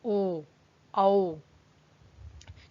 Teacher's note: फिर कंठोष्ठ, तो ओ औ, तो इसमें आप होंठों का भी इस्तेमाल कर रहे हैं और कंठ का भी, तो इसलिए कंठोष्ठ ध्वनियां होती हैं ये।